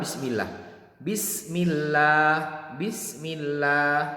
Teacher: sebelum lafadz Allah harokatnya kasrah contohnya di dalam Bismillah Bismillah Bismillah sebelum Allah itu harokatnya kasrah maka ini tarqiq tipis